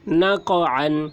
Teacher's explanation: قاف حروف قلقلہ میں سے ہے اور اس پر جزم ہے، اس لیے قاف میں قلقلہ ہوگا